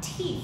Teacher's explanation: a T sound, where we use our tongue on our teeth